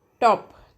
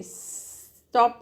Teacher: अगर आप टॉप बोलते हो तो एक पफ ऑफ एयर बनता है